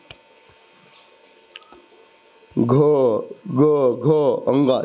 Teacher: जब ये बोलोगे ना तो आपके स्वर मतलब कंठ में क्या होगा, एक कंपन होगा, एक वाइब्रेशन होगा। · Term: सघोष